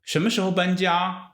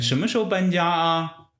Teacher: 什 么 时 候 搬 家 with a rising tone, and 什 么 时 候 搬 家 啊 with a normal, slightly not that rising tone